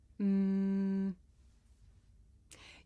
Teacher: I can even feel my nose vibrating. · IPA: /m/